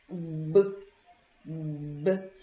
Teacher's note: observe que eu junto as duas os meus lábios e isso dificulta a passagem de ar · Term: consoantes